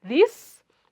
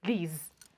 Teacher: the vowel here should be long, and then the last sound here is not S, it's actually Z, unlike for this. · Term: Z sound